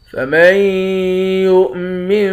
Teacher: میم کو یا کے ساتھ یعنی تشدید والے حرف کے ساتھ ملا کر ادغام کر دیں گے، یعنی غنہ کر کے پڑھیں گے، جزم والے حرف کے ساتھ ملا کر میم کو نہیں پڑھیں گے۔